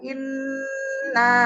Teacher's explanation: Ditahan dulu 3 harokat bunnya karena beliau mempunyai gunah musadadah ya, tingkatan gunah pertama, gunah akmal.